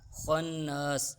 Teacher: خا حروف مستعلیہ میں سے ہے، خا کو ہم پر کر کر پڑھیں گے یعنی موٹا کر کر پڑھیں گے۔ خن، نون مشدد کا غنہ ہو رہا ہے نون پر، غنے کی مقدار ایک الف کے برابر ہے۔